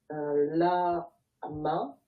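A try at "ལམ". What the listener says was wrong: Oui, mais là, c'est pas fini par contre. Parce que si tu dis la, ma, ça veut dire 2 syllabes.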